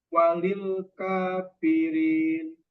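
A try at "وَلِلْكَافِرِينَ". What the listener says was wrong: Ingat pengucapannya lim jangan ditekan. Walilka, jangan ditekan. Ulangi.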